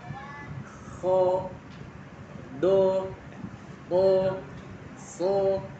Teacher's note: Pangkal lidah ke langit-langit sehingga suaranya menjadi tebal. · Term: istilah